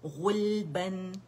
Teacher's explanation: غین موٹا ہے, غین لام باریک ہے